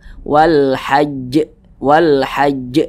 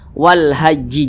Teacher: jangan langsung tapi ditasydidkan dulu wal haajj wal haajj ahah agak sedikit ditahan sejenak Wal Hajj